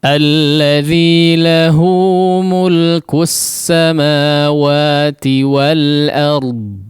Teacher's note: Ya, kalau kita keraskan dan sedikit agak panjangkan, kurang lebih seperti itu ya. Jadi wal ard ingat fathahnya disempurnakan ya, jangan o. Kemudian ra-nya ditebalkan, dijelaskan juga, huruf dad-nya juga terdengar dengan jelas.